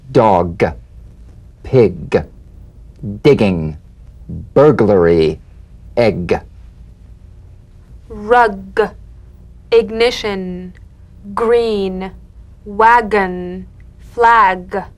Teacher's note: voiced pulsation of the back of the tongue